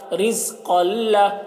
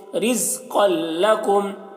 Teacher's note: دو زبر کو نہیں پڑھیں گے, الف کو بھی نہیں پڑھا جائے گا